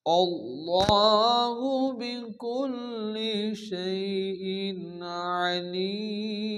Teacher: মাদ্দে আরিস ওয়াকফি 4 আলিফ পরিমাণ টেনে থামতে হয়।